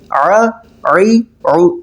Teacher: عین حلق سے ادا ہوتا ہے، حلق کے درمیان والے حصے سے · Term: عین کی ساؤنڈ